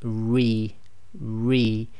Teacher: The letter Ra with Kasrah behaves as a light letter. Make sure you smile while saying the Ra with Kasrah. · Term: light sound